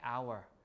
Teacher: Or the words like hour, right? Hour. We don't pronounce the H.